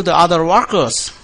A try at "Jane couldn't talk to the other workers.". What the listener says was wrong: Now you got to pronounce that T with more air. You're making it sound like a D. Jane could talk. Jane could talk to the other workers. Jane couldn't talk to the other workers. So when you do the T, make sure you pronounce it as a T, not as a D.